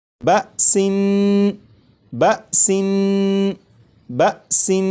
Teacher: جب تنوین کی ادائیگی کروں گا تو نون کو پڑھتے ہوئے زبان تالو سے لگا کر پڑھوں گا